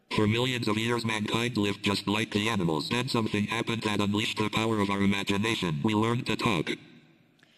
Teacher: it pretty much babbled that out all on one breath all in the same tone of voice with no intonation no change of pitch